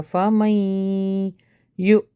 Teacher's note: یہاں پہ نون اسکپ ہوگا، میم جو ہے یا سے ملے گا